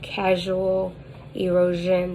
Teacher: that has a voiced palatal fricative